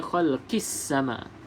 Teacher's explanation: kita baca khalqis sama, terus bunyi ke dalam huruf sin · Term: alif lam syamsiah